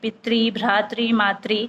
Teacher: हमारे मुख से री शब्द का उच्चारण अंत में हो रहा है, तो ये सभी जो शब्द हैं पितृ, भ्रातृ, मातृ, ये सब शब्द ऋकारांत हैं।